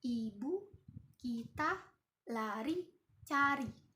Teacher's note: lidah berada di posisi paling tinggi dan di depan mulut. Bibir itu tidak dibulatkan.